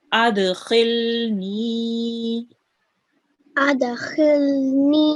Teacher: we have the ya here, which carries a sukoon, and it's a ya madya. That's why we prolong the ni for 2 seconds